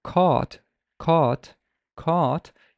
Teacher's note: cat cat you'd realize that your tongue is very relaxed but when you say the word caught caught caught you kind of feel that your tongue is more tense and it's drawn backwards a little bit